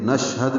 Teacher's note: شین ساکن پہ ہمس ہے, تفشی ہے, شین میں آواز منہ میں پھیلتی ہے. ہا دال جلدی ادا کریں گے.